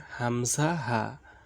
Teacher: 1 নম্বর মাখরাজ, হলকের শুরু হইতে হামজা হা।